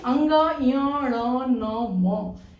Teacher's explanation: तो कंठ से, य का तालु से, ण का मूर्धा से, न का दंत से और म का ओष्ठ से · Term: पंचमाक्षर